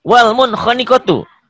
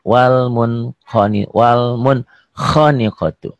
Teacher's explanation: Karena nun mati ketemu kho. Dibacanya jelas. Dibaca apa adanya. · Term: Idhar